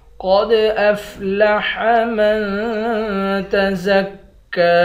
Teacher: قاف کو موٹا پڑھیں گے، قاف کو دال کے ساتھ ملا کر دال پر قلقلہ کریں گے۔ قد افلح من تزکی، میم کو نون کے ساتھ ملا کر نون پر اخفا کریں گے۔